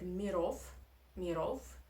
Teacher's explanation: And the pair in this case is f. So v you transform into f. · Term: Russian devoicing